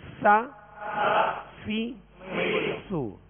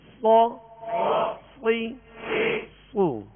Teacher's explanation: سین کو باریک، صا کو موٹا پڑھیں گے اور سا کو نرمی کے ساتھ باریک پڑھیں گے.